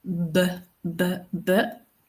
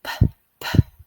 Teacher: when they feel the vibration, they know that they are saying B. When they don't feel it, they know that they are now pronouncing P correctly. · Voiced, coming from the vocal cords. Unvoiced, not coming from the vocal cords.